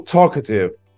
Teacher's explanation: underline the stressed syllable for example talkative talk the first syllable